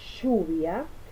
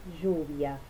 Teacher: alófono dorso prepalatal fricativo sordo, que sería lluvia, y con un alófono dorso prepalatal fricativo sonoro, que sería lluvia.